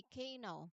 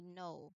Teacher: Meaning this particular combination at the beginning, it is common that you don't speak the letter K. There is no K sound here. So, we do not say K know, but we say know.